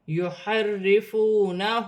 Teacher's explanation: را مشدد ہے، را کے نیچے زیر کی حرکت ہے، را باریک پڑھی جائے گی ، واو ساکن سے پہلے پیش واو مدہ بن رہی ہے،